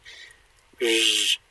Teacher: more like a zh sound, like a sort of a lower backer Z